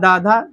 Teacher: दन से बोलेंगे यानी कि दात से बोलेंगे